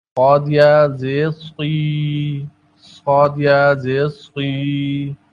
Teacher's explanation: کسی بھی حرف کو موٹا کرنے، کسی بھی آواز کو موٹا کرنے کا طریقہ کیا ہے کہ اس میں حلق کو تنگ کیا جاتا ہے. حلق کو کچھ تنگ کیا جاتا ہے، زبان کو خم دیا جاتا ہے، جس سے آواز موٹی ہو جاتی ہے